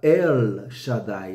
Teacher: é um El Mais aberto é a língua batendo lá no céu da boca mesmo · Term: língua palatal